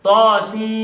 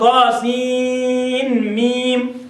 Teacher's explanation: فقد قرأها حفص بإدغام النون الساكنة في الميم من ميم